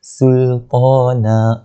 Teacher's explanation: Banyak juga kita jumpa mat iwad pada hari ni. Berartinya gantikan daripada bunyi nan tu kepada bunyi na, 2 harakat lah panjang dia.